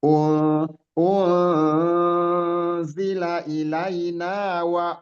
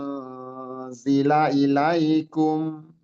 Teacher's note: selain samar dia kita tahan ya, kita tahan di situ minimal dua harakat gitu. Samar dan ditahan ya. Jadi ada ghunahnya, ada dengungnya. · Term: ikhfa